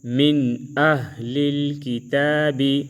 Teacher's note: ادھر ہم اخفا نہیں کریں گے کیونکہ نون ساکن کے بعد حروف حلقی سے حرف آیا ہے